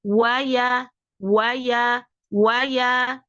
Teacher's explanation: huruf wau itu diupayakan untuk memonyongkan dulu kedua bibirnya wa dan I tidak boleh diseret jangan way ya tapi mau waya